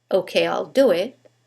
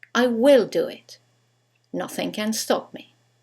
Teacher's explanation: When we use the contraction, there is no stress. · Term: contractions